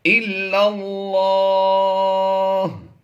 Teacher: تو یہاں پر یہ لفظ اللہ کی لام جو ہے یہ پر پڑھی جائے گی.